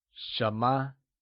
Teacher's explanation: 什么 is pronounced in the mid-rising tone.